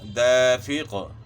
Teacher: قاف میں قلقلہ ہوگا، یعنی قاف ساکن بھی ہوگا اور قلقلہ بھی ہوگا